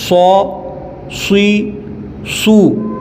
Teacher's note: صاد ہے، اس کو پر کر کے پڑھیں گے، یعنی موٹی آواز کر کے پڑھیں گے